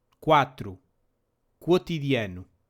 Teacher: Before other vowels, the QU combination is read like a KW in English.